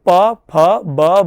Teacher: તો ઓષ્ઠ એટલે થાય છે હોઠ. તો હોઠ જ્યારે વધારે વાયુથી સ્પૃષ્ટ થાય ત્યારે ઉચ્ચરિત થનારા જેટલા પણ વર્ણો છે એ વર્ણોનું ઉચ્ચારણ સ્થાન ઓષ્ઠ થઈ જાય છે